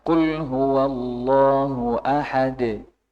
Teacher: qolqolah tidak ada tambahan Hamzah di belakangnya